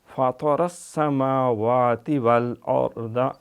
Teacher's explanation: اور السما سین پہ سیٹی ، فطر السماوات والارض، اور را پر ہے تفخیم کے ساتھ،